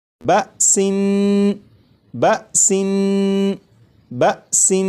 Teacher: نون کو پڑھتے ہوئے زبان تالو سے لگا کر پڑھوں گا